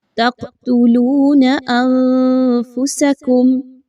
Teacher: تقتلون انفسکم، قلقلہ قاف پر جزم کی علامت، قاف حروف قلقلہ میں سے ہے اس لیے اس کو تھوڑا سا ہلا کر پڑھا